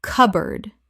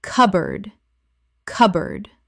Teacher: cupboard Two syllables in natural speech. The P is almost silent and board becomes erd.